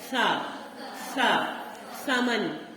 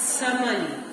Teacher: جو tip of the ٹنگ ہے یہ ہمارے دونوں دانتوں کے بیچ میں آ رہی ہے